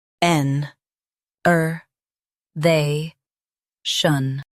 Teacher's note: emphasize they and keep shun soft